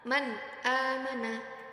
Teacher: dibaca jelas sebagai contoh yang tertera yaitu yang pertama Man amana di situ ada nun sukun bertemu dengan hamzah Jadi harus dibaca jelas